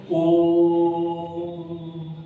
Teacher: जैसे हम कह दें ओ, इस प्रकार से जो है उच्चारण करना पड़ता है, तो ये जो है ना 3 मात्रा का समय लगाना पड़ता है, इसमें थोड़ा समय ज्यादा लगता है